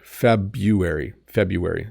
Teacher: there's an r in here and some people do say it but most people don't